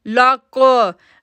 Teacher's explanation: लाम को काफ के साथ जोड़ेंगे, काफ मोटा लेटर भी है और यहाँ पर कलकला साउंड बन रहा है, इसलिए हम उसको लक पढ़ेंगे।